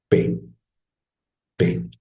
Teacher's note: p primero lo pronunciamos como siempre de manera oclusiva p p junto yo los dos labios y suena p